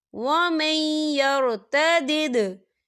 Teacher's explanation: दाल साकिन है, तो दाल पर कलकला होगा